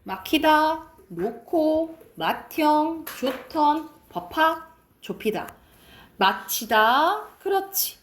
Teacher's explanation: 그래서 자음 축약을 해서 같은 말로 거센 소리 대기예요. 예사 소리 기역 디귿 비읍 지읒이 히읗을 만나 각각 거센 소리 키읔 티읕 피읕 치읓으로 바뀌어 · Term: 거센 소리 되기